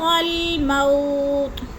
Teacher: مو کو لمبا نہیں کرنا، بولین ہے